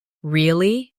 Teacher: With a rising tone to show surprise